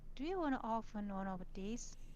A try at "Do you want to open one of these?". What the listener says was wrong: Again, she says often. No, not often. Open. Open. Not often. Open. Very, very important. This is actually one of the pronunciation that really kind of it can get very distracting. Like in some cases, it can make it very difficult to understand what you're trying to say. So be careful with that.